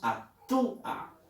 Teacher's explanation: La U es cerrada, con énfasis, y la A es abierta. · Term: hiato acentual